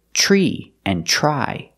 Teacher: The TR In the Beginning Sounds like the CH sound in chicken